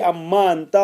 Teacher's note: لتقاربہما فی المخرج، چونکہ نون اور میم کا مخرج جو ہے وہاں ایک جیسا تھا، قریب تھا، تو مدغم کر دیا گیا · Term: ادغام